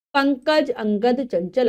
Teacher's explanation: वायु हमारी केवल नाक से निकलेगी, इसलिए इनका नाम अनुस्वार है